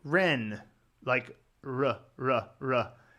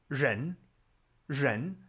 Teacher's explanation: with the Chinese, they put their tongue up and there is this vibration that happens between the tip of your tongue and the roof of your mouth.